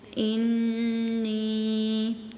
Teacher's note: نون کے ساتھ یا مدہ ہے، ٹھیک ہے، تو آپ نے اس کو تھوڑا سا لمبا بھی کرنا ہے